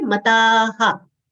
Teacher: Visarga sound will be ha, as the preceding vowel sound is long a. So we'll say aha, taha.